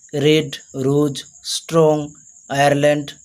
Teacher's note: when R is used before a vowel letter, British people pronounce it.